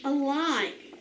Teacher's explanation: excuse me second syllable now it is unaccented on that a because it is unaccented that a is going to make the schwa sound